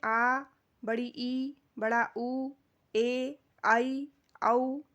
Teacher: इन स्वरों के उच्चारण में 2 मात्रा का समय लगता है और इनका निर्माण ह्रस्व स्वर से मिलकर होता है। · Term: दीर्घ स्वर